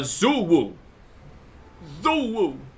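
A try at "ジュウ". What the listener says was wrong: It's pronounced J-Woo, but... no, it's J.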